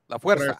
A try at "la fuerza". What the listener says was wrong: Your R rolling is terrible. La Fuerza.